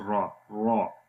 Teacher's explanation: جب را کو زبر کے ساتھ پڑھیں گے تو را موٹی ہو جائے گی